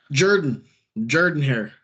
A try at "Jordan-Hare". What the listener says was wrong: No, it's Jordan-Hare. There's no H. Yeah, Jordan-Hare.